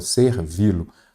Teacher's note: A sílaba tônica é o vi. Então, é a última.